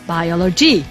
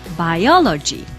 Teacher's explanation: the stress is over the second syllable